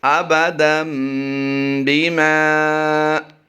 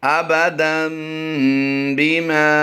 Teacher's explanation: جیسے ہی ہم با کی ادائیگی کریں گے تو دن کی نون کی آواز کو ہم میم سے بدل دیں گے، با زیر بی، آبادم بی، میم الف زبر ما، الف مدہ کرتے ہوئے لمبا کیا ہے ہم نے، آبادم بیما۔